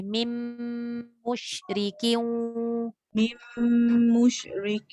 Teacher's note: Mim rapat bibir terus sebab dia nun bertemu mim.